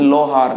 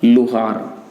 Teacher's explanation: शब्द का प्रारंभिक स्वर यहाँ दीर्घ है, और जब ये जैसे ये प्रत्यय जुड़ता है तो ये प्रारंभिक स्वर जो है वो किस में बदल जाता है, ह्रस्व स्वर में बदलता है